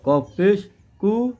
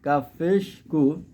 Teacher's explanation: কফের উচ্চারণ একটু মোটা হয়, কাফের উচ্চারণ একটু পাতলা হয়।